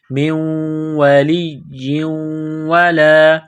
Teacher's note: نون ساکن کے بعد واو ہے تو نون ساکن پر غنہ کریں گے. من ولی ولا، لام کو دبانا ہے، واو کو دبانا ہے.